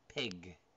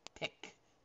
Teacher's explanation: Same location. One's voiced, one's not voiced.